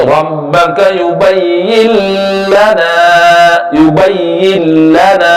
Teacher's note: nun mati bertemu dengan huruf lam hukumnya idgham bila gunnah. Dia tidak boleh dibaca dengung, akan tetapi nun itu disamarkan telah masuk huruf lam ke dalam huruf nun.